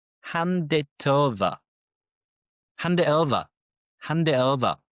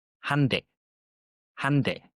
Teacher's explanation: Hand it over. So han, we don't pronounce the D, because the D joins the next vowel